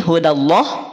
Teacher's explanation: Maka dal pastikan pada posisi tipis, direndahkan rahangnya.